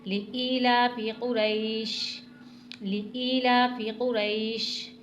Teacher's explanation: زبر آ رہا ہے را پر تو اس لیے را کو موٹا پڑھیں گے